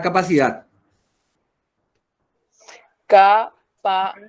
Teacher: vamos a tratar de, con estos ejercicios, ya practicar todo lo que vimos hasta ahora. Capacidad es una palabra, ¿dónde se carga la voz la palabra capacidad? En la última sílaba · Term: Aguda